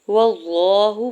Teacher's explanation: واللہ، واو کے زبر کو لام جلالہ کے ساتھ ملاتے ہوئے پڑھنا ہے۔ لام جلالہ کے اوپر کھڑی زبر دو حرکت کھینچ کے ادا کریں گے اور یہاں پہ اللہ کے نام کو پر پڑھیں گے